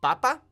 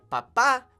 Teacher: the accent falls on that first a